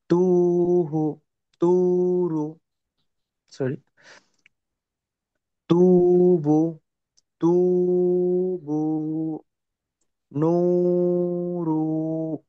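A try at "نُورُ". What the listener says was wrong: রু টান দিচ্ছেন কেন?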